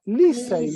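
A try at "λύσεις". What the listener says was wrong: Porque es que me estabas leyendo como en la siguiente sílaba, ¿no?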